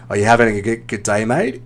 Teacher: intonation so a few times when you make made a statement you were doing that Rising intonation at the end I think we've mentioned this before so you're turning a statement into a question when it's not a question